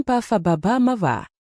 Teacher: उच्चारण स्थान होंट वर्ण प फ ब ब म वा विशेषता ओष वर्णों का उच्चारण होठों के मिलाने या उन्हें गोलाकार बनाने से होता है प और ब ध्वनियों का उच्चारण होठों के संपर्क से होता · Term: उष्ट वर्ण, ओष्ठी वर्ण